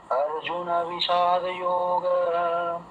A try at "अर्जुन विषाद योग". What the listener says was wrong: হ্যাঁ, যোগাই যোগা যোগা হা নেই, ঠিক আছে? ওখানে বিসর্গ নেই, যোগা। বাকি আপনার সব ঠিক হয়েছে। অর্জুনা বিষাদ যোগা। ও গা মানে গয়ের সঙ্গে অয়ের উচ্চারণ, গা, ব্যাস এই পর্যন্তই।